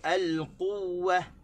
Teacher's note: Begitu juga al-quwwah, tak boleh, kena sebut al-quwwah. Yang pentingnya huruf waw yang dua tu kita akan dengar dua. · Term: waw yang bertasydid